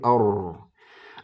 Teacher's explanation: Huruf ro itu makhrajnya ya, dia ke ujung lidah. Ujung lidah ke langit-langit ya, paling dalam ya, lebih dalam dari lam dan nun gitu ya. Lebih dalam dari lam dan nun. · Jadi wa akhfi takriron ya, wa akhfi takriron idza tusyaddadu, dan samarkan takrir huruf ro ketika tasdid terutama. Tapi meskipun enggak tasdid tetap harus disamarkan.